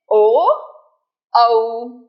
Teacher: जब ये उच्चारण आप करते हैं तो आपको थोड़ा सा फ्लेवर अ का थोड़ा सा फ्लेवर ऊ का दिखाई देता है। इसीलिए इसका स्पेलिंग ए यू औ इसमें अ यू भी है।